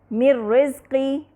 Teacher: را مشددہ ہو گیا اور نون ساکنہ کا مخرج و صفت بالکل ختم ہو گئے، تو یہاں ہمیں من رزقی میں کوئی غنہ سنائی نہیں دے رہا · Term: ادغام کامل بلا غنہ